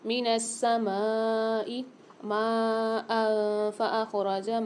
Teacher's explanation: ماء میں دیکھیے بڑا والا مد آ رہا ہے، یہاں پر بھی کھینچ کے پڑھیں گے 6 الف مدار۔ پھر آگے دو زبر کی تنوین کے بعد افعال غنہ والا قاعدہ آ گیا کہ یہاں پر فا آ رہا ہے 15 حروفوں میں سے تو یہاں پر ہم غنہ کر کے پڑھیں گے۔